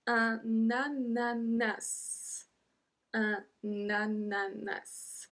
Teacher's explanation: we have to make the link between un et a, because un ends with a N and ananas start with a A, we have to say na, na, and then nananas, ananas, and then we pronounce the S as well.